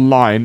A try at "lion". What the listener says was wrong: So, oh yeah, she says line without the O.